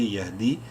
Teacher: یا مدہ ہے، دال کو ایک الف کے برابر لمبا کریں گے